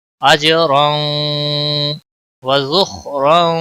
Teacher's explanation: اجرا وذخرا، ذخا حروف مستعلیہ میں سے ہے، موٹا پڑھیں گے۔ را دو زبر کی وجہ سے موٹا پڑھا جائے گا